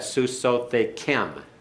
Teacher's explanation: the accent's on the last syllable